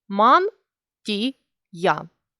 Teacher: звук т є м'який так як стоїть він перед і